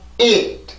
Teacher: 모음으로 소리를 만든다라는 얘기는 성대를 강하게 긴장을 시켜서 이렇게 뒤에 발음과 연결을 시켜주면 되는 거죠.